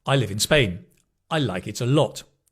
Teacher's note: It's a falling and a falling.